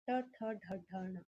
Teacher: जिव्हा मुड़कर मूर्धा को स्पर्श यानी फोल्ड होकर वो ऊपर की डायरेक्शन में फोल्ड होती हो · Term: मूर्तनीय